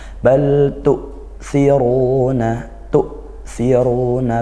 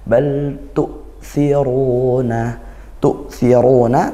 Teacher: Hamzah sukun itu sifatnya syiddah. Dia menahan suara.